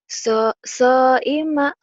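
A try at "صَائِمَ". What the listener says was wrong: nggak ada yang panjang. So'ima gitu tuh.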